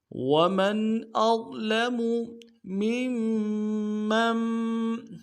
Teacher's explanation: میم کو اگلے میم کے ساتھ ملانا ہے، میم کے اوپر تشدید زور دیں گے، اور اگلے میم کو پھر جو اگلا میم ہے منع کا اس کے ساتھ ملائیں گے، جو بیچ میں نون ہے یہ نہیں پڑھیں گے کیونکہ منع کے اوپر تشدید ہے، زور دیں گے۔